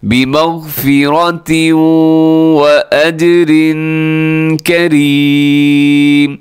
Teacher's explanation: بمغفرۃ کہ آخر میں تنوین ہے اور آگے واو ہے یرملون میں سے، تو ادغام آپ نے کرنا ہے غنے کے ساتھ